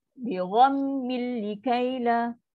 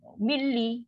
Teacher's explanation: Jangan bunyi dengung, jangan bunyi izhar, tak nak. Masuk 100%. Nun tu dah hilang terus. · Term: tanpa dengung